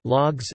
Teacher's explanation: Rising tone followed by falling tone with interruption in the middle or some creakiness in the voice. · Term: Broken tone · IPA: [lûɔ̯ks]